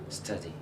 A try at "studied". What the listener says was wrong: Studied. With a D sound.